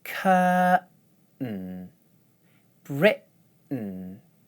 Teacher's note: As you can hear, I'm not making a t or d sound in these words. For the t words, I use a glottal stop at the end of the first syllable, and then use an n sound for the second syllable.